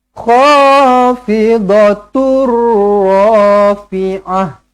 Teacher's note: tanwin bertemu dengan huruf ro sabdu jumpa dengan ro sabdu macam mana tidak perlu didengungkan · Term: idgham bila ghunah